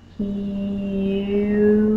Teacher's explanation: there's a little bit of an e sound right before the y